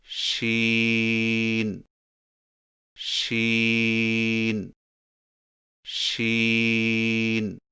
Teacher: شین کی ادائیگی میں زبان کے درمیان کو تالو کی طرف بلند کرتے ہوئے باریک اور پھیلتی ہوئی آواز میں پڑھیں، یعنی شین شین شین۔